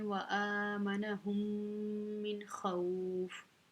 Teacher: یہ نون ساکن ہے، اس کے بعد خا حروف حلقی میں سے آ رہی ہے تو یہاں پہ ہم نے اظہار کرنا ہے، نون کو بالکل ظاہر کر کے پڑھنا ہے، اس کے اوپر اخفا نہیں کرنا، اس کے اوپر ٹھہرنا نہیں ہے